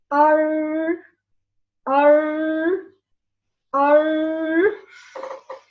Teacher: The tip of the tongue touches the gum of the two upper incisors. We can feel if we say R, I will hang the tip of the tongue in this place. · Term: Ra